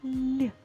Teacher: перед м'яким знаком стоїть буква L але звук буде м'яким ль